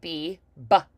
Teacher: you're gonna press those lips together for the BB B and pop them open